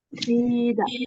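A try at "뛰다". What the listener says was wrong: Kayaknya tebal ya. Tuida.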